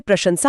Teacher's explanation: प्रशंसा में पहला श तालव्य है और आखिरी स दंत्य